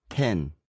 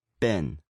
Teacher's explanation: The first sound is the voiceless sound p in, Pin, the voiced b in. bin, If you put your hand up in front of your mouth when you make these sounds, you should feel a puff of air.